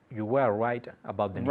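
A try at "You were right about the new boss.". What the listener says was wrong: Try and say your R's a bit more Englishy. Coge tu labio inferior.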